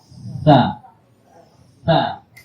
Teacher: Itu makhrajnya ujung lidah bertemu ujung gigi seri atas. Jadi harus keluar lidah. Nah, baru keluar anginnya. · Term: huruf sa